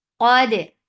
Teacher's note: Qaf is heavy, but dal is light, and it is majhura. Give the qalqala very nice and clear sound. Qad. Sad is heavy.